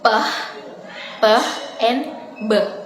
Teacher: Bilabial produced with the lips pressed together.